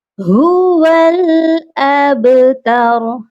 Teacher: ہا کی آواز سینے والے حلق سے آئے گی، اور ابتر با پر قلقلہ کریں گے کیونکہ با حروف قلقلہ ہے۔